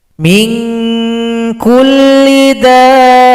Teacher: Kalau kita berhenti pada lafaz dabbatin, dal ini panjangkan dulu 6 ketukan, baru tasydid pada huruf ba. Mad lazim mutsaqqal kalimi.